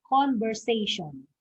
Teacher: the stress is in the third syllable